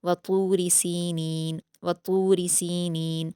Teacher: सीनीन सीन पर या मद्दा है दो हरकत खींच कर पढ़ेंगे नून पर भी याम्दा है दो हरकात खींचेंगे